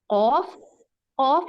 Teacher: قوف میں آپ کا جو بالکل پچھلا جڑ کا حصہ ہے وہ آپ کے کبے والے حصے پہ ٹچ ہونا چاہیے. قوف، آپ خود فیل کریں کہ آپ کا پچھلا حصہ زبان کا آپ کے اوپر کی طرف تالو کی طرف جا رہا ہے.